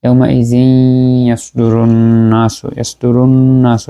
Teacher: ইয়াউমাইযি ইয়াসদুরুন, এখানে ইয়াউমাইযিনের এই যে জালের পরে যে তানবিন আসছে এরপরে ইয়া আসছে, যেটা হচ্ছে ইদগামে মাআল গুন্না, এর হরফ, তাহলে গুন্নার সাথে মিলিয়ে পড়বো, তানবিনের মাখরাজটা ইয়ার সাথে মিলে যাবে।